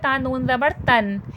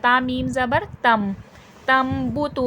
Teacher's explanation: کس کو بدل دینا ہے؟ نون کی آواز کو یا تنوین کی آواز کو میم میں بدل دینا ہے. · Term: اخلاف